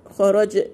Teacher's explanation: جيم هنا ساكنة قلقلة